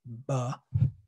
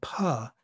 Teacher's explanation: The voicing doesn't come until after you make the p sound.